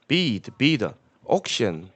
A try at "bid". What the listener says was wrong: Oh, bid. using the wrong vowel sound. I bid.